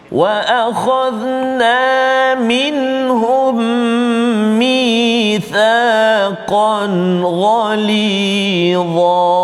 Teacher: Dan yang kedua iaitulah fokus kita pada kalimah mitsaqan ghalidha, iaitu tanwin di atas huruf qaf itu, baris dua di atas tanwin bertemu dengan ghaid. Izhar halqi, jelaskan bacaan kita, tak boleh dengung.